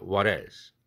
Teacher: what else가 아니라 what else 링크되면 플랩 됩니다.